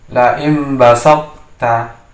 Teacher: sifat to-nya terbaca namun tidak menjadi qalqalah. Jadi sifat qalqalah yang hilang, tapi sifat dari huruf to-nya itu juga terbaca.